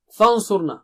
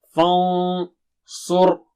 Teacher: نون ساکنہ کے بعد ہے صاد جو بہت موٹا اونچا ہے تو نون ساکنہ بھی موٹا اونچا ہوگا